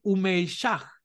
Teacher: Si lleva un punto anterior, entonces debe sonarse como la H inglesa, como una aspiración